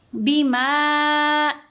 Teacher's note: میم ساکن کے بعد با، میم ساکن کا احفا ہے، میم کے اوپر غنہ کریں گے